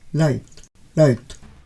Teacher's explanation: they don't end with a vowel like o or u, but with a proper T, a consonant